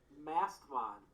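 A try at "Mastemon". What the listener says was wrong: Yeah, Mast E. You do pronounce that E.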